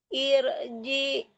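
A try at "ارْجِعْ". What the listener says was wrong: Jangan irji, Ibu. Kalau irji itu yang mati amzah, itu kan yang mati yang ain ya. Jiang, di tengah-tengah tenggorokan ya mantulnya.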